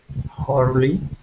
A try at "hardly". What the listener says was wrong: Hardly, more D, hardly.